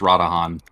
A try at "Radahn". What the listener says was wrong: Why would it be Radahan? It's Radahn. The whole thing is Radahn. Don. there's no Han at the end of Radahn.